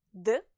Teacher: When you pronounce the letter D, D, your vocal cords vibrate. The consonant D is therefore a voiced consonant.